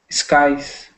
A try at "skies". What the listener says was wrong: Oh, good. Sorry, I don't know what I heard there. That was good.